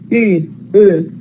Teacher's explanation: It's not back. You feel that it's fronted.